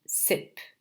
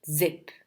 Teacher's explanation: tip and blade of the tongue articulates with the alveolar ridge, we have alveolar segments